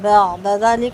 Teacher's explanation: عین ساکن ہے، آواز تھوڑی سی چلے گی، حمزہ کی طرح جھٹکا نہیں دیں گے